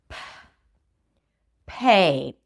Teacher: It feels like it's a little whisper. You're not even starting your voice.